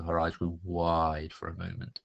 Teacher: on the word wide, for example, I extended the I sound in the middle to make it actually sound like it was wide.